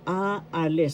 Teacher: The first syllable is a second syllable is another a and third syllable is list. So a alis the first syllable has the accent